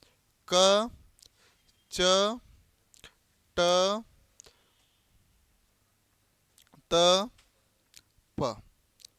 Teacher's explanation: जिन व्यंजनों के उच्चारण में मुख से कम हवा बाहर निकलती है कैसी हवा बाहर निकलती है कम हवा उसे अल्पप्राण कहते है ठीक है ऐसे ही जब ज्यादा वायु बाहर निकलेगी तो उसको